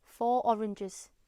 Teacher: A native Geordie speaker may drop the linking R sound, which would normally sound when a word ends with the letter R and the new word starts with a vowel sound